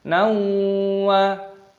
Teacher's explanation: fathah tanwin bertemu dengan wawu, idgham bi gunnah, dimasukkan dan disertai berdengung